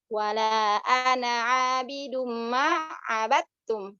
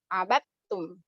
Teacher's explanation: Padahal itu ada abad sama tum, tapi masuk idgham namanya abattum.